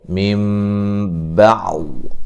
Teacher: یہاں میم ساکن کا ادغام ہے، غنہ کریں گے، میم بعض، یہاں نون ساکن کا اقلاب ہے، نون کو میم سے بدل کے پڑھیں گے